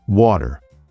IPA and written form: ˈwɔːɾər (water)